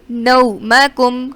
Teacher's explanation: نو واو لین. نومکم کھینچیں گے نہیں، حروف لین کو ہم کھینچ کر نہیں پڑھتے